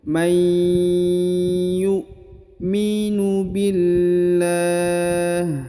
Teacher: Atau kalau kita matikan di ujung, may yu'minu billah. Jadi la-nya agak dipanjangkan 2, 4 atau 6 harokat karena kita akan berhenti di sini